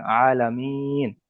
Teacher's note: মাঝখানে থেমেছি, আয়াতের শেষে কিংবা মাঝে থেমেছি, সেই ক্ষেত্রে এই জাবারটাকে, নুনের উপর জাবারটাকে সাকিন করে তার আগের অক্ষরের সাথে মিলিয়ে পড়লাম